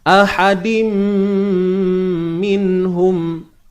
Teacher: Okey, ahadim tanwin bertemu mim. Tanwin bertemu mim ni tuan-tuan puan-puan, idgham bi gunnah. · Bi gunnah dengan dengung. Memasukkan dengan dengung. Masukkan apa? Tanwin ke dalam mim.